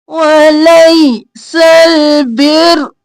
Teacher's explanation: سل سین زبر لام سل الف نہیں پڑھنا، ولیس البر روم رو موٹا پڑھیں گے اوپر پیش ہے